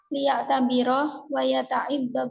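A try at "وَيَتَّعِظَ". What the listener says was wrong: Wa yatta'izu. Taknya yang tasdidnya.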